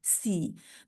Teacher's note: سین کی آواز میں سیٹی زیادہ پائی جاتی ہے